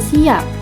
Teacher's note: Dalam kata pagi, A-nya itu diucapkan secara lepas, karena setelah mengucapkan huruf P, terdapat satu huruf vokal yang membuat bibir terbuka ketika mengucapkannya. Nah, selanjutnya di kata siap ini, huruf P-nya itu tidak diucapkan secara lepas, karena pada pengucapannya, bibir kita ini tertutup.